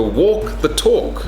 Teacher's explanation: the L is silent